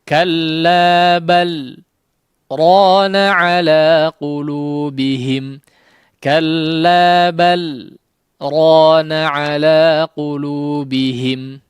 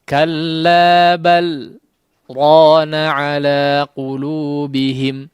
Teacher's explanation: Kalau saktah dia tanpa mengambil nafas, ya, berhenti sejenak, mungkin lebih singkat daripada waqaf, ya, kemudian melanjutkan bacaan, ya. Nah, ini namanya saktah.